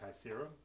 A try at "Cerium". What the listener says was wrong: Cerium. No K at all. Cerium.